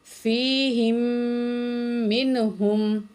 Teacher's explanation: ہا زیر میم ہم، یہ ساکن والا میم نہیں پڑھیں گے، ہا زیر میم ہم تشدید میں ملائیں گے، تشدید والے میم میں غنہ بھی کریں گے ساتھ